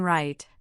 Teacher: For the R, as in right, the tongue pulls back and does not touch the roof.